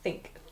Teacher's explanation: we're only sticking our tongue out a tiny bit, a really small bit between our teeth. So think. It's like the tip of the tongue only. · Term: TH sound